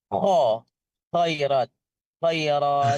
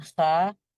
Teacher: Jadi kalau bedanya kho dengan ha itu terbuka fathahnya, tapi kalau kho jadi tebal mengumpulkan, jadi ada sifat idbaq